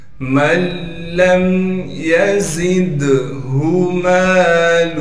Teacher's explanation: من لم يزدہ مالہ، یا کو بغیر کھینچے پڑھیں گے، زا کو سختی سے ادا کریں گے اور زا کو دال سے ملا دیں گے، دال میں قلقلہ کیا جائے گا، ہا کو بغیر کھینچے پڑھیں گے۔